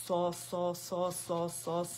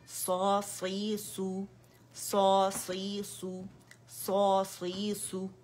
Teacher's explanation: इतबाक है लेकिन लिप्स को रोल नहीं करना आपने